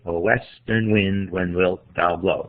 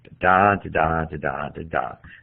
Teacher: You should hear that iambic meter.